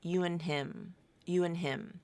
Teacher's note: I'm pronouncing the H in him now there's no special link between an n and an H you just smooth it out